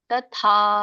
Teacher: ತ ಸಣ್ಣದಿದೆ, ಮುಂದೆ ದೊಡ್ಡ ಮಹಾಪ್ರಾಣ ಇದೆ.